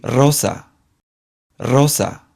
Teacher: The strong sound has a rolled R sound, much like the stereotypical R Spanish sound that we would expect